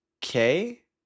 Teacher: It sounds similar to K with a sharp rising tone.